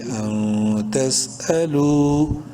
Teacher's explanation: زبر تس، حمزہ زبر ا، تس ا، لام واو پیش لو، واو مدہ ہے، لام کو ایک الف کے برابر لمبا کریں گے